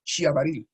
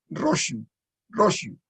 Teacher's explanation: tiene una peculiaridad, que junto a la xie hay como una pequeña i. Si yo digo xabaril, digo, más que xabaril, digo xiabaril.